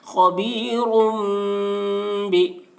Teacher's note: یہ را کے اوپر دو پیش کی تنوین ہے، تنوین کے بعد با آ رہا ہے اس لیے تنوین کو میم سے بدل کر غنہ اور اخفا کے ساتھ پڑھیں گے، اس کو اقلاب کہتے ہیں.